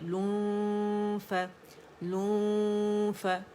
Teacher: نون کو چھپائیں گے، right away فا کے مخرج کے قریب جائیں گے ، اوپر کے ہمارے 2 دانتوں کے ایجز، نچلے ہونٹ کا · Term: اخفا